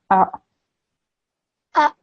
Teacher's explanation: Make sure you don't give it a jerk sound because the ayn is not a qalqala letter, okay? If you give it a jerk, it will sound as though you're giving it the ayn a jerk, which is incorrect, okay?